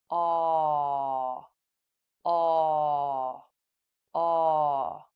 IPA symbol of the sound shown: ɔː